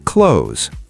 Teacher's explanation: Many people say clothes with two syllables, but native speakers say clothes, one syllable. The TH sound is very soft.